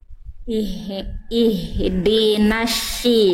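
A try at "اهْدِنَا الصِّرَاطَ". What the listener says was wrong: Nah, jangan jadi shin. Nah, yang tadi bunda lafalkan itu shin. Yang naik tengah lidah jadinya shin. Nah, jangan ihdinasy. Yang tadi sli. Nah, yang didorong lidah dalam bunda, bukan naikin tengah lidah, didorong lidah dalam.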